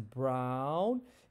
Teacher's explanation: ow as in brown, it goes from the bottom middle to the top back